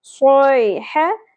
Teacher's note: ह वस्ते हलक से, जबर को ज्यादा नहीं खींचना, सोई ह, तनवीन के बाद यमनु में से वाओ, तो यहाँ पर इदगाम माल गुन्ना, वा, अलिफ हरफ मद्दा है क्योंकि इससे पहले ज़बर है और आगे तशदीद या जज़म में से कुछ नहीं है, तो यहाँ पर यह अलिफ हरफ मद्दा है।